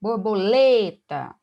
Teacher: tem 4 sílabas mas é a penúltima que é mais forte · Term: paroxítona